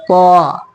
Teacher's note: اس کو تا کو منہ بھر کے کہنا